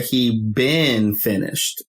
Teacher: But if I say he been finished and stress the been, that means he's been finished for a while now. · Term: stressed